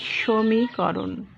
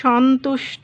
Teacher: দন্ত স এর উচ্চারণটা জোরালো স হচ্ছে, তাই তালব্য স, আর ওকার হয়ে যাচ্ছে, আদ্য অ ওকারে পরিণত হচ্ছে